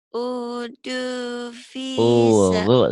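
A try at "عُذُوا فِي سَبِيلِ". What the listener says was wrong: Zal, agak pecah sedikit, agak rapuh sedikit. P-nya panjang apa pendek ya? Panjang. Udzu fisabili. Udzu fisabili.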